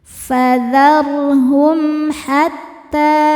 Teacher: hum ada hukum izhar syafawi sebab mim sukun bertemu huruf H, huruf selain mim dan ba ya, maka mim sukun dibaca jelas.